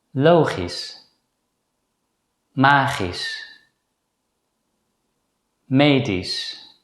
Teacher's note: if the letter combination SCH appears at the end of a word, it's generally pronounced as a voiceless consonant S. So in this case, the letters CH are silent.